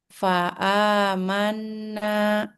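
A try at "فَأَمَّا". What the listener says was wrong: Nah, durasinya lagi di bagian nunnya. Fa'amanna gitu. Bagian mengalir nunnya.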